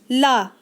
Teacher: प्रयत्न के आधार पर ल किस प्रकार की ध्वनि है? तो दोस्तों यह एक पार्श्विक ध्वनि है